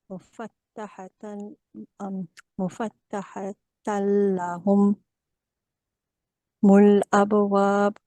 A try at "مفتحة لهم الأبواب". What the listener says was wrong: So when you are pronouncing this humul, make sure you do not pause here. You need to join everything.